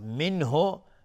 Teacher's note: منه نون ساکن بعدش های دو چشم اظهار حلقی